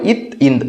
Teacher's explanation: நுனி நாக்கு பல்லினுடைய கீழ் பகுதி